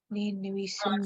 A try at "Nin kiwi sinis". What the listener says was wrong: Nin kiwi sinis, keen, not key, but keen.